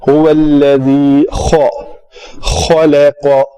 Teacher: تو ہونٹ گول کرنے کا طریقہ وہ یہ ہوگا هو الذی لام پتلا پڑا جائے گا. زال کا مخرج ہے نوک لسان جب ثنایا اولیہ اوپر والے دو دانتوں کے ساتھ جب زبان آ کے ٹکراتی ہے تو زال ادا ہوتا ہے